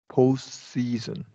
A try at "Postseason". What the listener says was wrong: that sounded exactly how it's supposed to.